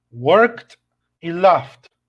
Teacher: Si es un sonido que no vibra, como work, como laugh, con la T.